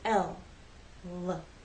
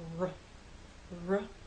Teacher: with L the tongue makes contact with the hard bump behind your upper front teeth with r there is no contact with the tip of your tongue in any part of the roof of your mouth the sides of your tongue are down forever L the sides